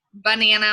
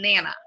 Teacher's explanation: So like banana might become nana. So they're leaving off an entire syllable. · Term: leaving off the syllable